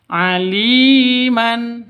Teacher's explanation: Li panjang dua ketukan karena ada ya mati diawali dengan kasrah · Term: mad asli